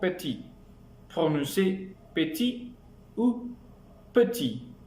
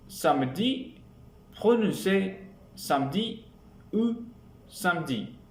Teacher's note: La voyelle peut ne pas être prononcée comme dans les mots petits, prononcée petit ou petit, ou dans les mots samedi, prononcé samedi ou samedi. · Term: E caduc